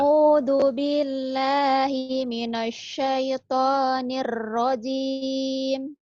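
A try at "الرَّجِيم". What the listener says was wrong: oh iya nirrajimnya agak ini ya. Hmm. Ada tasdid.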